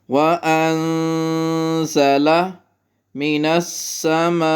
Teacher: واو پہ غنہ اور نون پہ اخفا